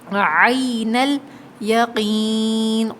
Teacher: عین الیقین، عین حلق سے ادا ہوگا، حلقیہ لیٹر ہے، عین الیقین، قوف کو موٹا پڑھیں گے، اور یا ساکن سے پہلے زیر ہے یہاں قوف پہ، تو یہ یا مدہ ہے، کھینچ کے پڑھیں گے۔